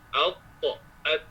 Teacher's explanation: makhrajnya hujung lidah letak belakang gigi sebelah atas